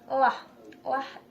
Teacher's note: lah place of articulation alveolar, and then manner of articulation lateral, and lah includes two voiced.